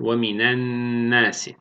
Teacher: Lam-ı tariften sonra nun harfi gelirse idgam-ı şemsiye me'al gunne.